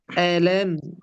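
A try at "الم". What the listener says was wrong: হামজা ধাক্কা দিতে হবে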